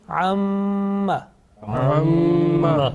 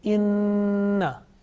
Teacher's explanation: there is a sustained continuous nasal sound, okay, about 2 seconds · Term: Gunna